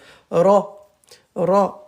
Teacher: On roule le R, le bout de la langue.